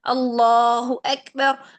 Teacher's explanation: تمام جگہوں پر یہاں پر اس میں جلالہ سے پہلے جہاں کہیں بھی زبر یا پیش آئے تو آپ نے اس میں جلالہ کو موٹا پڑھنا ہے، منہ بھر کے ادا کرنا ہے